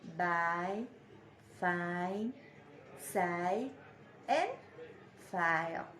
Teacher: this diphthong begins with an open vowel, which is between the front and back position.